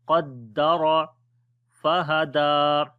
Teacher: Qaf we read in heavy sound. Ra also we read in heavy sound due to fatha sign on it.